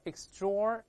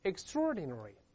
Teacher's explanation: 在美音中呢，这个▁TR▁这个后面的▁OR▁要加个卷舌音，▁TR▁要浊化 ，所以读成▁extraordinary，▁带来一遍▁extraordinary。▁He's▁a▁man▁of▁extraordinary▁enterprise，▁这个有非凡的进取心的这么一个人，表示这个含义你是个不可数名词，对吧？但是第二个含义更常见，就是指企业，有事业心，有进取心的，他要创办企业吗？含义相关。再读一下▁enterprise，这个发音是一样的，但是这个词就可数了嘛，一家两家企业就可数了。比如说国有企业▁The▁State-owned▁Enterprise，▁有时候咱们的报上看到缩写是▁SOE▁三个大写字母，这个▁State-owned▁要连读变成▁State-owned▁连到一块，我们读下国有企业▁State-owned▁Enterprise。那可数名词前面可以加冠词，后面可以用单复数变化了，对吧？再比如说▁collectively▁owned▁enterprise▁叫集体制